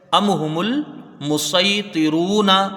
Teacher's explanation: حمزہ کو میم سے ملا کے جلدی پڑھا جائے گا، میم ساکن کے بعد ہا ہے تو یہاں اظہار شفوی ہوگا، یعنی میم میں بغیر غنہ کی اس کو جلدی پڑھیں گے